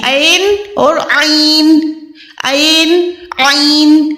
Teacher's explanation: عین جو ہوتی ہے حلق کے درمیان سے،